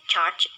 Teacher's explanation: The ch sound is made up from the plosive t and the fricative sound sh.